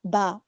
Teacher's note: ब हमारा कलकला का लेटर है जिसमें हमारी आवाज वापस से लौट आती है।